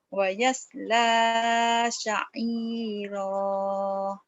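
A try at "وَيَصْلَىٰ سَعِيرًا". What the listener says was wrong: Kadang-kadangnya ada sa'irah ya. Masih ada haknya. Ayo, jangan ada hanya. Jangan ada hanya.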